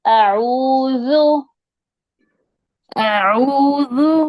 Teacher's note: دال نرم اور باریک